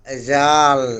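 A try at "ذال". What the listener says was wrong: লাল, না আরো নরম হবে, লাল। জিহ্বার আগাটা এখানে লাগান, লাগাইয়া নরম উচ্চারণ করেন,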